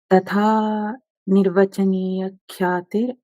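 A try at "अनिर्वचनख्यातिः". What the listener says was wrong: अनिर्वचनीय नहीं, अनिर्वचन तो अनुष्टुप होगा। अनिर्वचनीय करोगे तो अनुष्टुप नहीं रहेगा। वो पुस्तक में जो दिया है, आपकी पुस्तक में अनिर्वचनीय दिया है, मतलब पहले आगे पीछे कहीं नहीं दिया। हाँ, जिसके पुस्तक में अनिर्वचनीय दिया है उसको अनिर्वचन कर दो।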